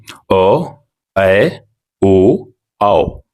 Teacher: इनके उच्चारण में मुह आधा खुलता है इनकी संख्या चार होती है यह है अ अ ओ औ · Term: अर्ध विवृत, अर्धविवृत